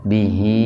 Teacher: i nya dibaca panjang karena sebelum huruf h huruf hidup ya sehingga menjadi mad shilah qashirah baca panjang dua ketukan